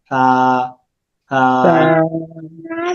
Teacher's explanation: নরম আওয়াজ, বাতাস খুবই কম বের হবে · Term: সেনসিটিভ হরফ